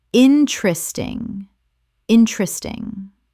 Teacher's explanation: Three syllables in natural speech. The second e disappears entirely.